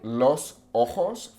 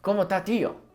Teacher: It's very quick and they just cut off the ends of words.